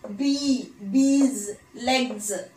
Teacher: ചില plural morpheme നമ്മൾ പറയുമ്പോൾ സെഡ് ചേർത്താ പ്രൊനൗൺസ് ചെയ്യുന്നത്